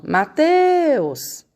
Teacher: Descobriram qual é a sílaba mais forte? Então, é o teus, porque é a sílaba que a gente demora mais quando a gente chama